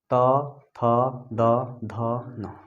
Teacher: जब हम लोग त को बोल रहे हैं तो कहाँ हमारा जीभ जो है वो दांत में सट रहा है। दांत में क्या हो रहा है, दांत को स्पर्श कर रहा है, तो ये क्या हो जाएगा, दंत।